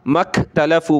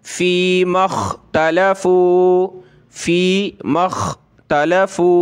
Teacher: خا کو موٹا کر کے گلے سے نکالیں گے، مخ پڑھیں گے